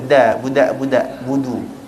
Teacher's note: makhraj huruf dal dengan huruf ta adalah sejibik sama, iaitu hujung lidah kita letak dekat belakang gigi atas.